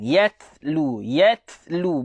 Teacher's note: Huruf ta ada sifat hams. Hams itu berangin.